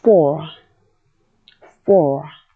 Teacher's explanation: In the word FOR, the OR sound comes just before the rhotic R. So you gather up the back of the tongue or you turn up the front of the tongue and say OR. And our plain OR becomes OR. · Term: rhotic vowels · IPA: /fɔr/